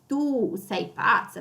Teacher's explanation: So you see how I stress the tu. It's even like the pronunciation of the u in tu is longer. I'm stressing the letters all out here.